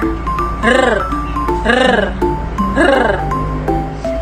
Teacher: Ang hangin ay ilang ulit na hinaharang at pinapabayaang lumabas sa pamamagitan ng ilang beses na paglapag ng dulo ng nakaarkong dila. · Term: paraang pakatal